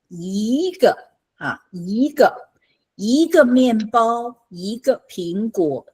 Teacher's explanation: So before a fourth tone, the first tone of one, yi, changes to second tone.